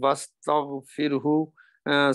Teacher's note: یہ را کو باریک پڑھیں گے، اس سے پہلے زیر ہے · سین کا ہمس کریں گے